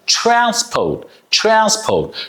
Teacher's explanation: T R is a ch sound